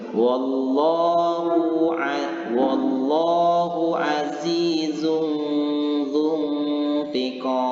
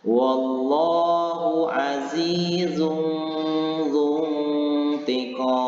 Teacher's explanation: Yaitu menyembunyikan bunyi tanwin di depan atau dhammatain antara izhar dan idgham, atau dibaca samar-samar seperti bunyi eng, kemudian disertai dengan dengung dan dibaca itu selama 2 harakat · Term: ikhfa